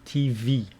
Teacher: even a simple word like TV, the stress is on the second syllable. TV. Don't say TV.